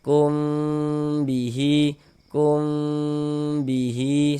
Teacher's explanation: Nah, kalau ini kita baca dengan dengungan. Ee jadi di bagian kumnya itu suaranya itu kita tahan kita panjangkan sejenak ya kira-kira sepanjang dua harakat. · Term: ikhfa syafawi